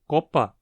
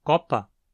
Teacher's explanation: copa com o fechado ou copa com o aberto não são interpretadas como distintas os fones o e o não são dois fonemas distintos em